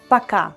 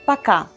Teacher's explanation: Please note that letter O is unstressed, so we pronounce it as A.